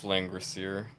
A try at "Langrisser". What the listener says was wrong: There's no I. It's SSER.